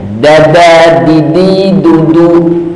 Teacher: ujung lidahnya nempel pangkal gigi seri atas